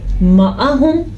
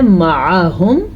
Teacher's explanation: عین اگر باریک پڑھیں یا عین کے صحیح مخرج سے نہ نکالیں تو وہ الف یا حمزہ بن جاتا ہے، یعنی کہ لکھا ہوا ہے معاہم، اگر ہم اس کو پڑھیں گے معاہم تو ہم نے عین نہیں پڑھا، اس کا معنی ہی غلط ہو جائے گا۔